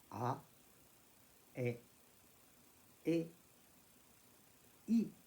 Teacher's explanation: Il me faut évidemment faire plus d'efforts pour prononcer le I. Le A est plus relâché. A, E, I. Le I est plus exigeant pour passer du A au I.